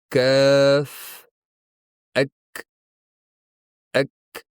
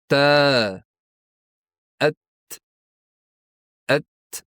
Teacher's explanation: Harfni aytganda ovoz paychalari tebranmaydi. Tovush chiqayotganda havo erkin chiqadi. Harf oxirida kichik nafas seziladi. Ya'ni hams bu jarangsizlik va havoning chiqishi demakdir.